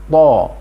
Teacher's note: Huruf to itu selain makhrajnya, itu adalah ada sifat yang melekat padanya yang disebut dengan isti'la. Sifat isti'la ini membuat huruf to harus diucapkan dengan bulat.